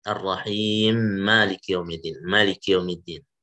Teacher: Jadi mim yang Ar-Rahim, ya kan? Ar-Rahmanir-Rahim, mimnya ini disambung atau diidghamkan ke mim yang setelahnya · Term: idgham kabir